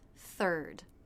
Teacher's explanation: This begins with the unvoiced TH sound, so the tongue tip must come through the teeth. Third. Then we have the vowel R consonant sounds, just like in the word first.